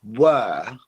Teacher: said that quickly the word were there's no R where ER you can't hear the r at the end of the word were okay because it's British English and it's non-rotic that means we